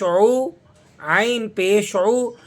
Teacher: इसको अदा करने के लिए आपको होठों को गोल करना होगा। लेकिन मुकम्मल तौर पर आप गोल नहीं करेंगे। ना तमाम होठों को गोल करने से ये जम्मा अदा होता है।